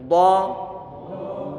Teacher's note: Dotnya kita tebal dan pengucapannya dengan kita menyungkan bibir kiri kita, karena huruf dot dia dalam kondisi dhammah. Makhrajnya huruf dot itu adalah di pertengahan lidah ditempelkan kanan ataupun kiri, dan dia punya sifat istitalah.